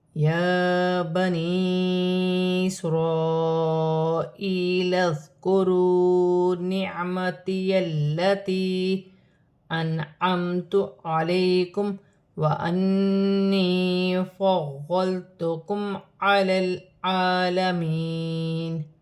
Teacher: یا پر کھڑی زبر ہے، ایک الف کی مقدار کھینچ کر پڑھا جائے گا، یا ساکن سے پہلے زیر یا مدہ بن رہی ہے، چھوٹی مد بھی ہے، مد منفصل، چار الف کی مقدار کھینچ کر پڑھا جائے گا۔